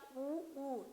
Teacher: मुख जो है गोलाकार हो रहा है, ओठ क्या हो रहा है, गोलाकार हो रहा है, तो हम इसे ले आएंगे वृत्तमुखी में।